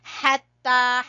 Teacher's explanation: مدہ کی وجہ سے، اور نون کو چھوٹا پڑھیں گے، حتی، ہا کو گلے کے درمیان والے حصے سے اور تا کو کھینچیں گے کھڑی زبر کی وجہ سے، حتی